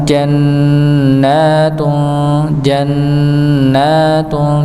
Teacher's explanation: hanya ditahan saja nun tasdidnya tapi dipanjangkan dua harakat ya